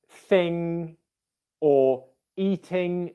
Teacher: So if you get the NG spelling at the end of a word in words like thing or eating, the ing ending, you do not pronounce that as an N and a G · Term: ng sound